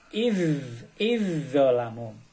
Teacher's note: Maka huruf zal harus melebur ke dalam huruf depannya. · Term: idgham mutajanisain